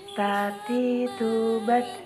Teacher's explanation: dengan menyentuhkan ujung lidah dengan gusi gigi seri bagian atas dengan mengalirkan sedikit nafas